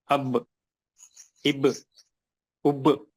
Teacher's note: 2 होठ मिलने से पढ़ा जाता है